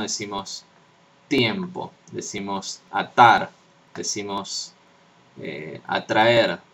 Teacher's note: se pronuncian con la lengua contra la lengua atrás de los dientes superiores. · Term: dentales